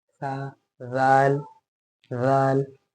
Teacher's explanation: हाँ, जाल को किस तरह पढ़ते थे, सा की तरह पढ़ते थे ना, जबान को ऊपर के बाहर के दांतों में हल्का सा टच करते थे